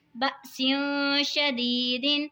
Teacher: ساکن حمزہ کو ہمیشہ جھٹکے سے پڑھا جاتا ہے